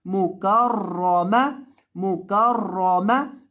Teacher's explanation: रॉ को यहाँ आपने मोटा करके पढ़ना है क्योंकि रॉ के ऊपर जबर है।